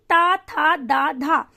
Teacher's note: जीभ जो है वो दांत का स्पर्श करती है जब हम ता, था, दा, धा बोलते हैं। अगर आपको यकीन नहीं हो रहा है तो आप बोल करके देख लीजिए और ध्यान दीजिए कि हमारी जो जीभ है वो कहाँ स्पर्श कर रही है, ता, था, दा और धा बोलने में।